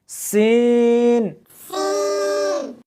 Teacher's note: اس حرف کو جب پڑھیں گے تو سیٹی کی آواز آنی چاہیے